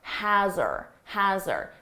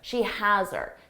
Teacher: Maybe you noticed that has her sounded like has-er, has-er. So we often drop the H on her